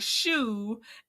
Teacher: Chanita is a sh sound, like shoe, and she does not have an R in her name